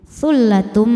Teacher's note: Sullatum, selanjutnya ada hukum idgham bil gunnah karena ada tanwin dhammah menghadapi huruf mim. Cara bacanya bunyi tanwinnya ini lebur ke mim. Sullatum sambil dengung tahan.